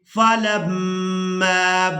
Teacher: میم مشدد پر غنہ کریں گے